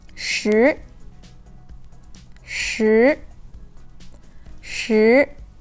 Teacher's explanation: the second tone is a rising tone it sounds like what we have in English at the end